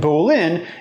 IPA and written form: bolɪn (Bolin)